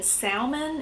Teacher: my parents do still pronounce the l sorry i came to realize that was incorrect or at least